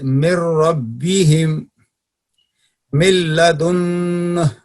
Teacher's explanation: ابھی یہاں پڑھیے کہ نون نمبر 3 جی پڑھیے. نمبر 3 نون ساکن اور نون کا ادغام لام اور را میں تام ہوگا